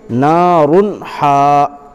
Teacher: دیکھو دو پیش کی تنوین کے بعد حروف حلقی کے 6 حرفوں میں سے، یہ 6 حرف اوپر دیے ہوئے بریکٹ کے اندر، 6 حرفوں میں سے ہا آیا ہے، تو ہا آنے کی صورت میں اظہار ہوگا، یعنی نون کی آواز، جو تنوین کی جو آواز نکل رہی ہے اس کو بغیر غنہ کے جلد پڑھیں گے